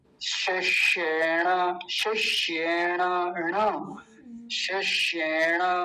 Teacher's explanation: एक तो तालव्य शकार और एक मूर्धन्य शकार, दोनों का ध्यान रखेंगे